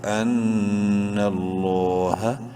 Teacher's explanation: لفظ اللہ سے پہلے نون کے اوپر زبر ہے اس لیے اس لام کو بولڈ کریں گے، ساتھ ہی ایک الف کے برابر لمبا کریں گے کھڑی زبر کی وجہ سے